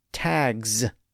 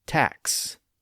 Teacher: That's because the k sound in tac is voiceless. So that lack of voicing carries over and produces the voiceless S sound after it